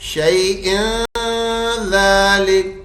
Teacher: रवा में हम तनवीन को तनवीन ही पढ़ेंगे, इदगाम नहीं करेंगे, नून नहीं हटाएंगे बीच में से